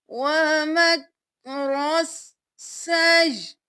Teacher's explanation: یہاں پہ ہم نے یا کو حمزہ کے ساتھ ملایا اور حمزہ کو ساکن کر دیا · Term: حمزہ ساکن